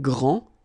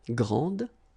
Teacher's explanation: you don't pronounce the final D, will be exactly the same as the plural form for the masculine, grand.